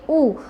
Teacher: ઉના ઉચ્ચારણ વખતે જીભનો પાછળનો ભાગ કેવો રહે છે? ઊંચો રહે છે. માટે ઈ અને ઉના ઉચ્ચારણની અંદર જીભની સ્થિતિની અંદર ફેરફાર થાય છે.